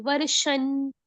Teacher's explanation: अभी जो वर्ष के अंदर बिंदी लगी हुआ है उसका उच्चारण हम आधे न से करेंगे। क्यों? क्योंकि तथ धध न, वो त वर्ग का अनुनासिक है ना, यहाँ पे लगा हुआ, आगे न आ रहा है, तथ धध न आएगा।